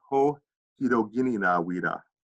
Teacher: It sounds like an N, but it's actually really an R.